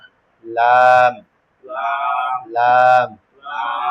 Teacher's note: জিহ্বার গোড়ার কিনারা সামনের উপরে সামনের উপরে দাঁতের মারির সঙ্গে লাগাইয়া